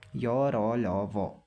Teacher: उच्चारण में श्वास का अवरोध कम होता है, इसीलिए इसे अर्धस्वर भी कहते हैं। अर्धस्वर मतलब स्वरों से मिलता जुलता ही इनका उच्चारण होता है, क्योंकि सांस का अवरोध कम होता है ना।